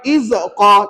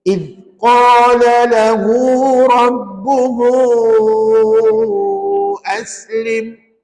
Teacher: Makhraj huruf zal, hujung lidah kita kena keluar sikit, tahan pada gigi kacip.